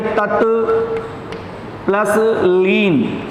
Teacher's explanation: त के बाद ल आने पर त का ल हो जाता है। त के बाद ल अगर आ रहा है तो ये त का हो जाएगा आपके ये ल।